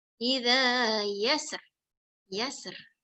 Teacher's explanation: Bila kita mewakafkan huruf ra, mesti nak bunyi ra dia sikit aja bunyi dia. Dia bukan echoing tapi mesti nak ada bunyi dia sikit.